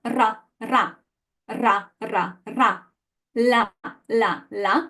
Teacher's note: solid contact solid touch no air passes we obstruct the air